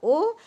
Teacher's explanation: स्थान ओष है और ओ आ प्लस उ बराबर ओ तो आ का उच्चारण स्थान कंठ है और उ का ओष्ठ है तो ओ का उच्चारण स्थान है कंठ ओष्ठ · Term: संयुक्त दीर्घ स्वर